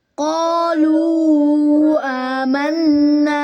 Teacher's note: لو کو پھر 2 الف کے برابر یعنی 4 حرکات کے برابر لمبا کریں گے